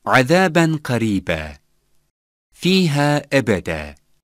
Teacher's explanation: Künnes, Münteşir, If a word finishes with a letter which has double fetha, the last letter is pronounced as having a fetha, and the vowel is lengthened for one elif time.